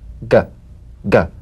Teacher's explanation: You'll feel a crisp tap and a voiced pulsation of the back of the tongue. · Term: voiced tongue back plosive